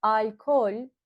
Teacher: We soften the O. That's why we will treat it as a front vowel instead of a back vowel. We will treat it as ince ünlü rather than kalın ünlü, and it will become de.